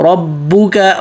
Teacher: با پہ تشدید ہے اور با سے پہلے را موٹا پڑھنا ہے